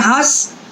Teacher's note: और जब कहते हैं हंस तो वो अधिकतर हिस्सा जो है वो उसका मुंह से उसकी वायु निकल रही है और नाक से नाम मात्र को निकले